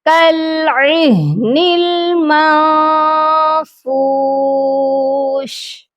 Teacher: ہا کی آواز کو سینے سے نکالنا ہے